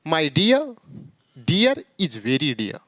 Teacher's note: आर का जो उच्चारण होगा वो आधा या न के बराबर करेंगे